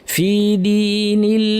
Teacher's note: এই লামটা আল্লাহ লামটা পাতলা হবে এখানে কারণ আগে জের আছে ফিদিনিল্লাহি আফ বলার সময় ফায়ের আওয়াজ বাতাস দুইটাই যেন থাকে সাবলীল